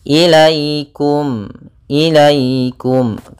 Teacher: Maka dalam pelafalannya harus lembut, tidak boleh ilaikum. Jangan sampai juga dibaca dengan bacaan e. Harus sempurna i-nya. · ada ya sukun yang di dalam fathah, maka ini bakal bacaan lin. Maka dalam pelafalannya harus lembut, tidak boleh ilaikum.